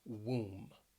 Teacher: Keep in mind that O, it really has that ooh sound.